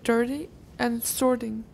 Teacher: The flap occurs in words that have an R-colored vowel in a stressed syllable, in dirty and sorting.